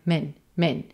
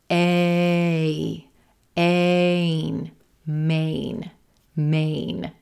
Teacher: We want to make sure we hear A, Maine, Maine. Sometimes that N consonant can mess with our vowels. So Maine might sound more like min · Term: full gray day, A